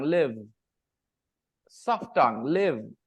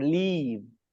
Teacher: the pronunciation then remember the first one l i v e you pronounce it with soft tongue live soft tongue live and when you say l-e-a-v-e your tongue is hard leave